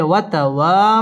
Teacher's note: ওয়াও ঠোঁট গোল করে উচ্চারণ করতে হবে · জবরের বাম পাশে খালি আলিফ মদের হরফ একালিফ টেনে পড়তে হবে